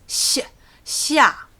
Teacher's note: The X is a sh sound that has been thinned down almost to a s sound. So it's sh, xia, 4th tone.